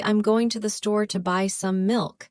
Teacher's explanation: The stressed words would be going, store, buy, and milk. These are the content words that carry the meaning. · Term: sentence stress